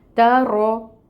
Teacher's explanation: ہمس اس کی صفت ہے، وہ بھی لائیں گے۔ رو کے اوپر فتحہ کی حرکت ہے، رو کو پر پڑھیں گے اور 1 کاؤنٹ اس کی حرکت کو ادا کریں گے